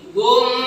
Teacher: idgham misli ini bacaannya 4 harkat gunahnya. Ini paling panjang gunah.